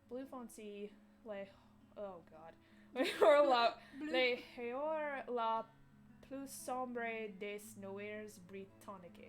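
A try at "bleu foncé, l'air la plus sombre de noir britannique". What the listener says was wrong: You don't really pronounce the S on the end. And French is one of those like where you don't really pronounce the whole.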